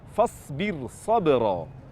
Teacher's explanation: Yang terakhir, saat mengucapkan penggalan ayat fasbir sabra, huruf ra ini bersukun terletak di setelah kasrah dan huruf setelahnya huruf isti'la. Karena huruf isti'la ini terletak di kata berbeda dengan huruf ra, maka huruf ra-nya dibaca tarqiq.